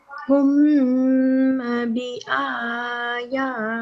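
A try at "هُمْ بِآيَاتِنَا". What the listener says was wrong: Okay, so you have said humma. It's not humma, it's a meme sakin. This blue meme is a meme sakina. And you will not say it humma because it doesn't have a tashdid and it doesn't have a fatha. So it's just hum. But we prolong the meme because of the ba.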